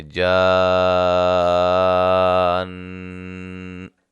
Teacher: اور جب وقف کریں گے تو نون مشدد پہ غنہ کرتے ہوئے وقف کریں گے